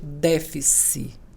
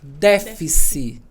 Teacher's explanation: Quando vocês forem falar essa palavra, pode falar tranquilamente déficit. Com acento na antepenúltima, porque essa palavra foi aportuguesada há muitos anos.